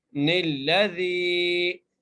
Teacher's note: زال کے ساتھ جائے مدہ ہے، اس لیے ایک الف کی مقدار کھینچ کے پڑھیں گے